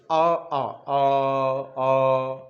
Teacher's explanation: आपका प्रेशर कहां पड़ रहा है, कंठ पे पड़ रहा है। तो इसका मतलब ये हो गया कि कंठ में कौन सा हो गया, आ और बड़ा आ।